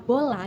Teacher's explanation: Pada kata bola yang diucapkan, vokal termasuk vokal sedang karena lidah berada di posisi tengah